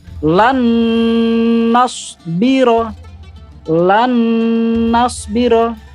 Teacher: Yang jelas sama-sama didengungkan ya. Panjangnya sampai 2-3 harokat. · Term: idgham biguna